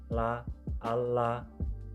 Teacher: cara artikulasinya lateral approximant dan letak artikulasinya alveolar